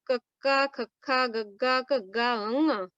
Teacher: ਕੰਠੀ ਧੁਨੀਆਂ, ਮਤਲਬ ਕੰਠ ਚੋਂ ਸਾਡੀ ਜਿਹੜੀ ਆਵਾਜ਼ ਆ ਉੱਥੇ ਸ਼ੁਰੂ ਹੁੰਦੀ ਹੈ